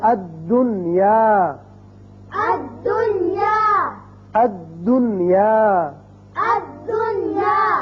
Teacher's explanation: یہاں یاد رکھیے کہ نون کا اظہار ہوگا، اسی قاعدے کا نام اظہار مطلق ہے۔ جب اس کو پڑھیں گے الدنیا نہیں کریں گے بلکہ پڑھیں گے الدنیا، الدنیا، الدنیا، الدنیا، نون کا اظہار ہوگا۔